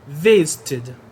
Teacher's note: E visit, som de T, então vou ter o som do ED, vai ficar id. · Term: som de id